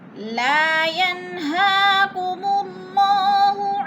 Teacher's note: لا کے اوپر الف مدہ، الف خالی سے پہلے لام کے اوپر زبر ہے تو الف مدہ ہو رہا ہے۔ الف مدہ کو ایک الف دو حرکات کے برابر لمبا کر کے پڑھنا ہے۔ ینہا، ین پہ اظہار ہے، نون ساکن کے بعد ہا آ گیا ہے۔